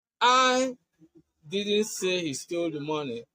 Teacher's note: with emphasis on I, what it means is that I was not the one who said it. Probably someone else said it.